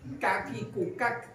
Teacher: Di pangkal lidah yang agak ke depan. Pangkal lidah tapi masih depannya kof ya. Mengenai langit-langit. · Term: kaf